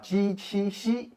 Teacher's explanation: ji, qi, xi, which are palatal sounds